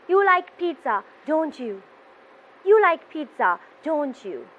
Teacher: you have a falling intonation towards the end of your question